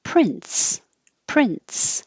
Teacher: And I spelled it with a T because it really does sound like a T, but the T is invisible and happening just accidentally when you go from the N to the S.